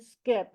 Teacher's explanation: there won't be air coming out until the P